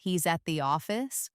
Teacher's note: if you say it with a rising intonation at the end, he's at the office, it becomes a question, often one of disbelief. If you say it with heavy stress on the word he, it could imply a surprise that he specifically is at the office.